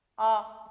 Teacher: विवृत स्वर के उच्चारण में मुख द्वार पूरा खुल जाता है।